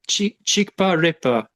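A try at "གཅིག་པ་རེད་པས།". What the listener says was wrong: Pa mare pa sa. There is a sa suffix here, right? No. Ani? Chikpa.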